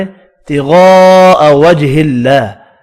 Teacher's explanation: بڑی مد کو 5 الف کی مقدار میں کھینچ کر پڑھنا ہے